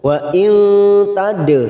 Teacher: nun sukun bertemu ta ikfa hakiki kita samarkan 3 ketuk. Wa in tad dal sukun qalqalah sugro kita pantulkan tad.